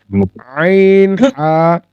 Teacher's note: আইন হা হচ্ছে কণ্ঠনালীর মধ্য থেকে উচ্চারিত হয়